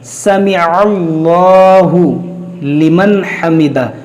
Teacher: عین کو لام سے ملائیں گے اور یہ لام موٹا کریں گے